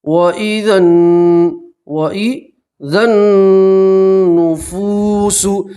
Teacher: یہ الف اور الف لام نہیں پڑھیں گے، دال کو نون سے ملائیں گے